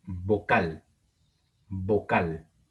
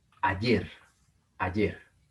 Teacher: Son palabras agudas porque tienen el acento en la última sílaba.